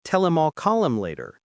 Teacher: The H in him drops out completely. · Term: connected speech